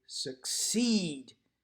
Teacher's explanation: I would argue that we say succeed and we stress the second syllable.